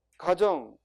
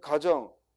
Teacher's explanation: 가정, 우리 집에 잠깐 갔다 오니까 짧게 발음하고, 반면에 가정, if, 즉 추리할 때 가정을 가설을 해서 추리한다는 의미니까 길게 발음하는 거예요.